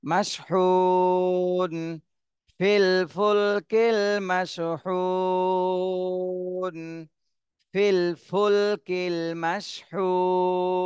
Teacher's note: যেহেতু আমরা এখানে ওয়াকফ করতেছি এজন্য জজম দিতে হবে এখানে আর এর আগে তিন আলিফ টান দিতে হবে